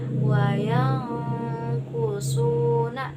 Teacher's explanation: nun bertemu dengan huruf kaf. Jadi dibacanya itu begitu samar gitu, sangat jauh. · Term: ifa